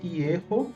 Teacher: forma uma primeira sílaba plena, né? É uma sílaba aberta com vogal longa.